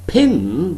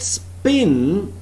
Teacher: That's why both these are called the allophones of the phoneme p. In the word pin there is aspiration, but in the word spin there is no aspiration. P doesn't have some sort of plosiveness here.